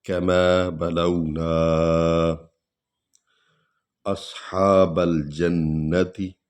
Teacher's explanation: سواد کو پر پڑھیں گے، ہا کو تھوڑا سا کھینچ کر پڑھیں گے کیونکہ کھڑا الف ہے